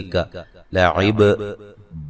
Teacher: बा पे कलकला करना है और रा को मोटा अदा करना है